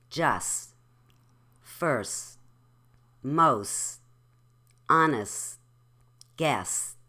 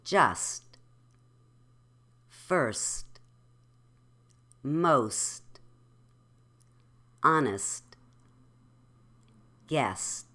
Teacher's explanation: those T's were lightly aspirated because they were just words with nothing following them.